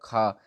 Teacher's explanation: खा हमारा महाप्राण भी होगा और अघोष भी होगा